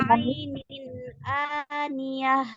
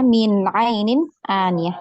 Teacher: Jelas ya, izhar, tidak dipanjangkan.